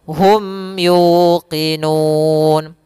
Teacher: Suara mimnya harus dibaca jelas dan tidak boleh ditahan gunnahnya. Tidak ada tahanan gunnah. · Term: izhar syafawi